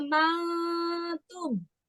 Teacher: tumnya jangan keras, nggak tegas tapi samar. Namanya ikhfa. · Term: ikhfa syafawi